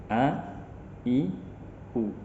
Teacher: Ketika melafalkan huruf A, tidak banyak nafas yang keluar di dalam pelafalan huruf tersebut. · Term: jahar